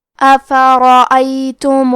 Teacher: حرف را پہ زبر ہے تو ہم یہ حرف کو موٹی آواز میں پڑھیں گے